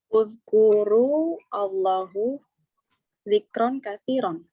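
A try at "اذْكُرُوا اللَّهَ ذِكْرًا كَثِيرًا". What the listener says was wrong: Uzkurullaha. Ya, Allahnya fathah. Uzkurullaha. Jadi yang betul adalah uzkurullaha dzikran katsiran.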